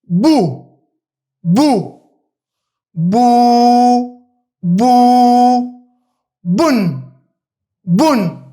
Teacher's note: U lexohet e para shkurt, e dyta u zgjat dy kohë u dhe më pas me tenvinin un lexohet shkurt un. Un. Pra nuk e zgjasim.